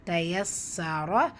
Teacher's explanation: ரா ஃபத்தா பேச்சு வந்திருக்கு, வல்லினமாக ஓதணும்